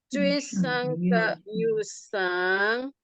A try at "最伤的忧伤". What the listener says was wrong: Nah, enggak boleh yang belakang ini. Yusang. Nah, gantung. Enggak boleh goyang loh sang belakangnya.